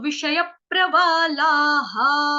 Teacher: क्योंकि ला, ल के आगे आ की मात्रा लगी है तो विसर्ग का रूल होता है कि जो विसर्ग जहां पे लगता है उससे पहले जैसा उच्चारण होता है, ला तो हा, लू तो हु, ली तो ही, ये विसर्ग का उच्चारण है